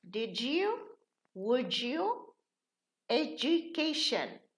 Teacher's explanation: We have a ta before a ya, it changes into cha. We have a da before a ya, it changes into ja.